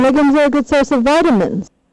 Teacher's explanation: intonation is um conveyed in such a way that vitamins is emphasized and you see that because of the rise in the fzo